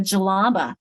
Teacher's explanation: that j sound is a very fast d and j together